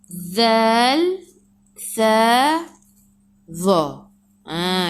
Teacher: Zal, sa dengan za. Semua hujung lidah keluar pada gigi depan.